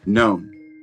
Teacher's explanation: most Americans will say known. So it's a diphthong, ou,